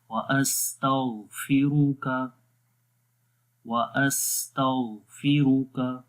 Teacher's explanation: غین کو موٹا پڑھیں گے، را کو موٹا پڑھیں گے ، غین حروف مستعلیہ میں سے ہے، موٹے حروف جو ہیں